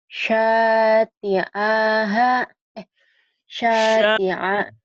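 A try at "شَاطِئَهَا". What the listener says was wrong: T-nya pendek. A-nya pendek. Sya sama H yang panjang. Iya, A-nya jangan ke ain ya.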